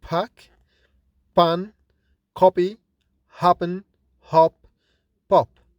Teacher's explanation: That is, P and B are different in another feature which is called force of articulation. That is, P is produced with more force since it is produced without vibration in the vocal cords. When we have no vibration in the vocal cords, it is fortis. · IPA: /p/